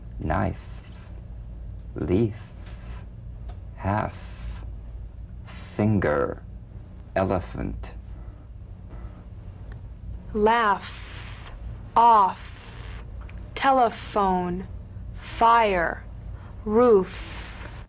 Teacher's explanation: the unvoiced fricative labiodental upper teeth to lower lip just like the v